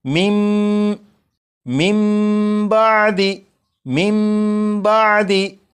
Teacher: जब नून साकिन के बाद बा है तो इस नून साकिन को फिर नहीं पढ़ेंगे, बल्कि नून साकिन को मीम से बदलेंगे और गुन्ना करके पढ़ेंगे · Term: इकलाब